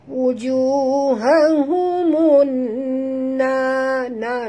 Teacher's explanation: kita masukkan bunyi mim baris depan ni terus ke dalam nun disertai dengan dengung di atas nun, ada tasydid ya, nama hukumnya idgham syamsi.